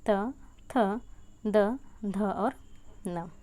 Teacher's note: अब हम बात करें कि इसका उच्चारण स्थान क्या है, तो इसका उच्चारण स्थान है दंत, अर्थात जिसके उच्चारण में दांत से उच्चारण किया जाए, मतलब जिह्वा दांत के पास स्पर्श करती हो, उसे दंत व्यंजन कहा जाता है।